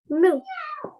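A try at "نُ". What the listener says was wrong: Okay, don't jerk it at the end, darling, yeah? Nu. Okay, so when you finish, yeah, just make it nice and soft. Nu.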